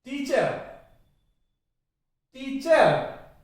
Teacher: कैसे, देखिए, सबसे पहले इस उदाहरण को ले लीजिए, TEACHER, टीचर, चर, चर गलत है, चर नहीं बोल सकते उसको, टीचर ए पे खत्म होगी ना कि रे पे, टीचर, टीचर।